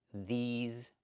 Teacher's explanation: These plus the zz sound like zebra.